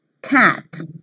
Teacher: a front unrounded vowel just above the half-open position